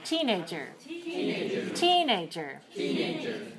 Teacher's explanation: So the second word, the second part has to be lower. So I often hear people say this with 3-2, but you need to remember it's 3-1.